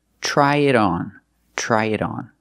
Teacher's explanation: the T in it is a fast D because it's between vowels